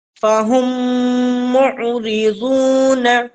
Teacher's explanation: جب ہم میم کو عین سے ملائیں گے تو یہاں پر قلقلہ نہیں ہونا چاہیے